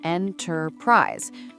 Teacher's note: In enterprise, the stress is on the first syllable and the word is shorter.